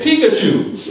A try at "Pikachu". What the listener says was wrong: it should be emphasized on the second syllable, which is Pikachu.